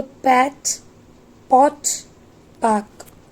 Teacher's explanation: जब हम प साउंड प्रोड्यूस करते हैं तो वो साउंड वॉइसलेस, प्लोजिव एंड बाइलेबियल होती है.